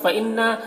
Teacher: نون مشدد ہے، غنہ کے ساتھ پڑھیں گے۔